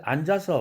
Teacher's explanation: 앉아서 할 때는 이 지읒 발음이 다시 살아나요. 그 역할은 하죠. 그러나 자음이 왔을 때는 단일 자음으로 발음되는 것이고, 앉아서 하면은 지읒은 이미 뒤에 있는 아라는 음절로 이동돼서 갑니다. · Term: 연음